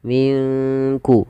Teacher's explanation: mati ketemu Kaf di sini kita namakan dengan bacaan Ikhfa maka cara membacanya samarkan nunnya kepada huruf Kaf